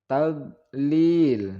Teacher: 2 harokat kemudian kesalahan yang sering terjadi yaitu pada tablil Nah di sini bot itu tidak boleh dipantulkan atau Qalqalah karena huruf d bukan salah satu dari huruf Qalqalah